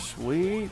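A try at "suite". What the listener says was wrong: Or a suit. You pronounced that sweet.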